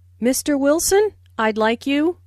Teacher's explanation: Notice the rising intonation on Mr. Wilson, which is used to address someone.